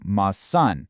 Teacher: moving the stress to the end of the word, it's about entirely changing the physical way you produce the sound.